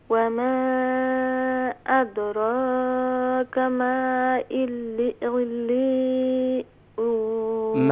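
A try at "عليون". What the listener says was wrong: ہاں عین کا ساؤنڈ ادا کریں گی، حمزہ کا ساؤنڈ نہیں ہونا چاہیے. علیون.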